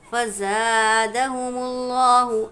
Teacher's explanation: फ़ज़ादहुमुल्लाहु, अलिफ मद्दा है, एक अलिफ की मिक़दार खींचेंगे। लफ्ज़ अल्लाह के लाम से पहले पेश है तो इस लफ्ज़ अल्लाह के लाम को हमने पूर पढ़ना है